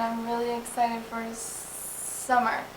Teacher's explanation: the speaker was using a prolongation in the S sound for summer.